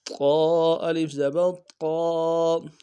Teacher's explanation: موٹے حروف میں سے موٹا کریں گے قا کو · الف مدہ ایک الف مدار میں کھینچیں گے